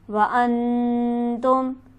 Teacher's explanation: انتم میں نون ساکن ہے، لہٰذا یہاں پر غنہ کیا جائے گا